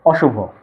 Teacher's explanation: অ এর উচ্চারণটা বজায় থাকবে। বিবৃত উচ্চারণ হবে অশুভ